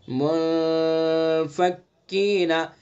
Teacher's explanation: ناک کے بانسے سے چھپا کر کے ادا کریں گے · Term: اخفا